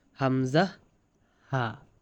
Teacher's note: হলকের শুরু হইতে হামজাহ হা